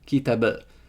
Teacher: And that dotless I is a high unrounded back vowel.